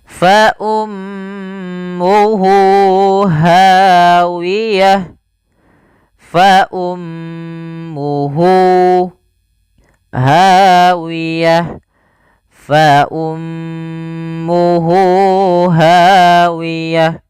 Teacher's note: Kemudian pada lafal hu di sini ada silah al-dhamir, maka di sini kita namakan dengan mad silah qasir, yaitu mad yang kita panjangkan 2 harokat disebabkan karena ada hak dhamir yaitu huruf ha